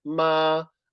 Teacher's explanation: ma as first tone is like a flat tone